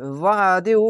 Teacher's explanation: আইনটিকে মোটা করে গলা চিপে পড়বেন।